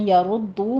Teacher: یا ردو میں بھی را مفخم پڑھی جائے گی، دال کے پر تشدید ہے، سختی کیجئے، اوپر ضمہ ہے، اس کے بعد واو مدہ آ رہی ہے، ہونٹوں کو گول ہی رکھیے گا۔